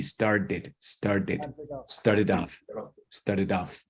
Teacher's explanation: so that t sounds like a d